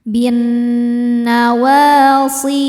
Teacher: Bin nawasi si hukumnya mad thobi'i zohiri karena ada ya sukun sebelumnya kasrah. Cara bacanya panjang dua harakat.